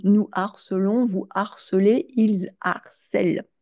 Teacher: ce H ne se prononce pas, mais il interdit de faire la liaison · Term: H aspiré